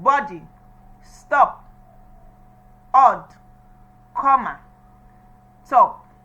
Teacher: O sound. It's as if the tongue is moving back. And the lips are still unrounded and they are now wide open.